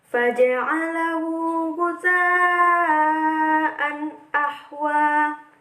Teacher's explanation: Yang ke nomor 12 faja'alahu lahu, yaitu berhukum tajwid mad silah qasirah karena huruf ha-nya itu bertemu dengan huruf selain hamzah, yaitu bertemu huruf ghain dan dibaca panjang sepanjang 2 harokat